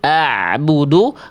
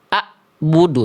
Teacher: Nah, biar biar ee enggak jadi hamzah, teman-teman harus tahu Hamzah ee itu dilafalkan dari tenggorokan pangkal di sini. Kalau ain itu dilafalkan dari tenggorokan tengah di sini. Ah, bedakan antara ain di sini suaranya sedikit mengalir.